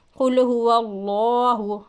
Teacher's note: अल्लाह के लाम से पहले ज़बर है, इस अल्लाह के लाम को हम मोटा पढ़ेंगे।